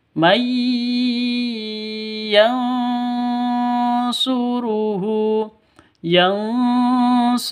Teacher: Nun mati bertemu dengan ya. Cara bacanya itu masuk ke ya, mai, seperti itu, disertai dengung 2 ketukan. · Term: Idgham bi gunnah